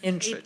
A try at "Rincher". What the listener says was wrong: H is silent. Rincher.